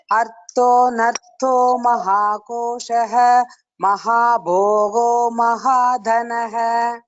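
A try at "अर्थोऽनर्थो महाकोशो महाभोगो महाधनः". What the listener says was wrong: Only small input is again little more stress on the Mahaprana Akshara. Artho nartho Mahakoshah Mahabhogo Mahadhanah.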